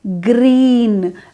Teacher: green is the high front vowel I